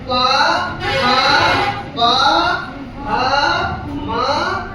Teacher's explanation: इन्हें हम ओष्ठ वर्ण कहते हैं। इनको बोलते समय हमारे ओंठ आपस में मिलते हैं।